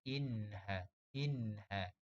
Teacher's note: Di sini berlakunya tanwin. Tanwin bertemu dengan ha. Jadi kita jelaskan bunyi tanwin tu. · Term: izhar halki